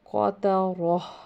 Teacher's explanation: اور گول تا وقف میں گول ہا بن جاتی ہے، اور ساکن کر دیں گے تو یہ اس کے ساتھ جب ملے گا را کے ساتھ تو قاترہ.